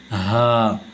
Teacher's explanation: عین ہا، تو یہ ہا درمیان حلق سے ادا نہیں ہوتی، یہ جو ہا ہے شروع حلق سے ادا ہوتی ہے، شروع حلق سے حمزہ ہا ، یہ ہے وہ ہا۔ اس ہا کو ادا کرنے میں